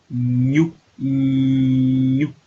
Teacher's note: Entonces, el sonido sale por las fosas nasales.